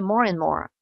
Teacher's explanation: Et à la limite, le D, vous n'êtes pas obligé de le prononcer. Souvent, à l'oral, il passe à la trappe